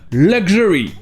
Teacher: dans le mot luxury, le luxe, le X se prononce gj